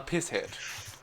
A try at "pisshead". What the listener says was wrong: No, you're saying piss head. The H is silent. It's pisshead. You have to just miss out a range of letters, or letters, as I should actually say.